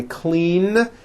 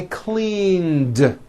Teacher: clean ends with a voiced n so today I clean yesterday I cleaned I cleaned the kitchen